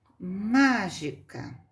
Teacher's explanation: não é a última não é a penúltima é a antepenúltima ela chama proparoxítona